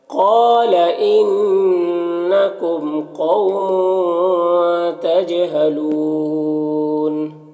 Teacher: تجہلون جیم میں قلقلہ ہوگا